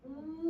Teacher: 입술 동그랗게 말린다고 해서 원순 모음